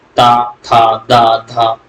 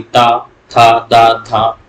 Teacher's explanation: ता, था, दा, धा, तो देखिए ऊपर वाले दांतों में जीभ छू रही होगी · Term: दंत व्यंजन